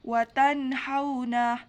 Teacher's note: Tajwid pada bacaan tersebut yaitu itsar halki sebab huruf nun sukun bertemu huruf ha dibaca jelas tidak berdengung sama sekali